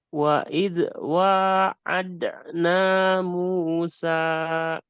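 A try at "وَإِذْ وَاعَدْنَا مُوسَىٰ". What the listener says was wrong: Nah ini jangan sampai mantul. Wa id, alirkan. Wa id wa'adna Musa.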